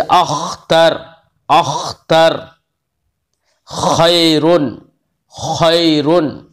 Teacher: तो गैन और खा आखिरी हल्क से अदा होते हैं